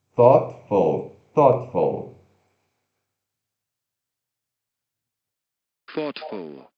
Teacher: Epa, aí vem TH desvozeado